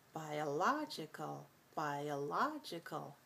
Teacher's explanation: Biologist, biologist, 4-2. When we move it to the adjective, or we use the adjective, the stress shifts over to the da-da-da logical